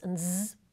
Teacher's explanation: alveolar fricatives